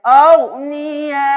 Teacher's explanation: जोर से झटका नहीं देना, हल्की सी हमजा की आवाज आए